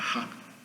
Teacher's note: H, uma vogal sem a vibração da garganta